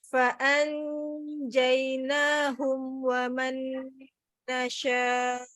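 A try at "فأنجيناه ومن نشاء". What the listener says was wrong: Nah, masih bibirnya maju dulu. Nasya. Nasya. Ya boleh maju, tapi bukan maju untuk kayak mau menebalkan gitu loh. Kayak tebel, makanya sya itu hati-hati ya. Dia nyebar tapi nggak tebel. Nggak maju.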